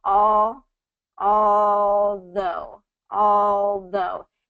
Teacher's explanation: this is in week three we talk about the dark L dark El's kind of have a cup shape to it so the tongue isn't necessarily hitting the roof of your mouth but you can you can produce it with the L touching